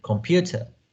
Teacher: Native speakers don't pronounce the O vowel in the first syllable. But they made the vowel weak. It becomes a very weak. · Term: schwa